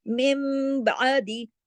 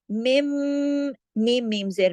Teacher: नून की आवाज मीम में बदल गई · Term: इकलाब